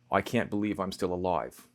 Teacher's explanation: Now, if you want to go really deep cut, not only is the I always a diphthong, that's basically two vowels said together, I, but in a classic New York accent, the first vowel is aw, like in coffee.